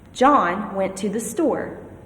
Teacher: Hear how there was more emphasis on the word John and on the word store? I was stressing those words.